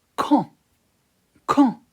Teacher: We don't pronounce D at the end. We just say quand.